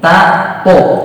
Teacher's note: makhrajnya sama tuh dia, ya, ujung lidah bertemu gusi, ta, to, ini ujungnya apa, makhrajnya sama, tapi secara sifatnya dia berbeda.